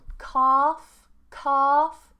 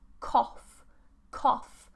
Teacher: Cough is a shorter or rounded vowel.